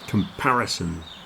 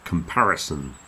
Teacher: four syllables the second syllable is the big one